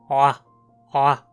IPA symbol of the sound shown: ʕa